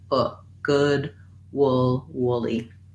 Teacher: the first syllable is stressed in woolly and the y says the tense e sound